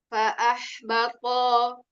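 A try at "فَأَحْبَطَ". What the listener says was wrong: Tolnya kepanjangan.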